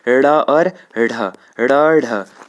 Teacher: यह पहला वाला होता है सघोष अल्प प्राण दूसरा ढ होता है सघोष महाप्राण एक अल्पप्राण होता है एक महाप्राण होता है संयुक्त व्यंजन हमने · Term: उत्क्षिप्त व्यंजन